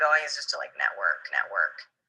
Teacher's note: it's a low creaky vibration produced by a fluttering of the vocal cords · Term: vocal fry